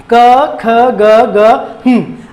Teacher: कंठ से उच्चरित होने वाले हैं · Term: वर्गीय व्यंजन